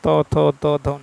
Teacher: जिन वर्णों का उच्चारण दांत और जीभ के स्पर्श से होता है।